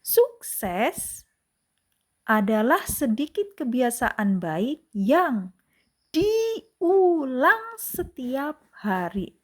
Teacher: Nah, diulang setiap hari kan di sini huruf besar jadi diperlambat dan ditekan atau ditinggikan nadanya ya. Jadi sukses ditinggikan nadanya lalu diulang setiap hari ditinggikan nadanya. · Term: penekanan pada kata tertentu